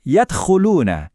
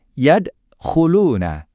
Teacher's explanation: Kedengaran kan pantulan kecilnya di tengah?